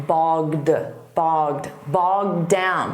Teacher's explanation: when you see the D from down, you won't hear it so much on the past simple of the verb bog